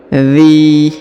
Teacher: huruf zzi dipanjangkan dua harakat karena di depannya terdapat ya sukun atau ya mati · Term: dipanjangkan 2 harokat